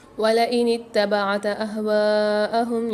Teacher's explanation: یہاں واو کے بعد الف مد آ رہا ہے، الف اور مد دونوں آ رہے ہیں، تو یہاں 4 سے 5 الف میں دار کھینچ کے پڑھیں گے